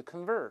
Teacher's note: 美国人加个卷舌就▁convert ，▁注意一定上下上这个上唇，这是轻轻触一下这个convert，▁就这个上牙触下唇，